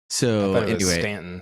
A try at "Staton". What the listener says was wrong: there's no extra in in it it's Staton not Stanton